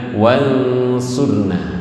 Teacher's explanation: di sini wansurna, tidak ke eng, tidak ke n, tengah-tengah, makanya disebut ausato, wasatun, ausat, tengah-tengah, bainal eng wal n, antara eng dan n.